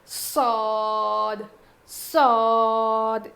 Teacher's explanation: اس کو تھوڑا موٹا پڑھیں گے صاد. زبان کی نوک کو نیچے کے دانتوں کے جڑ میں لگانے سے صاد ادا ہوتا ہے. زا سین صاد کا مخرج سیم ہے.